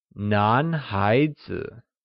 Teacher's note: nan, spoken in the second tone, means male, and haizi, also spoken in the second tone, translates as child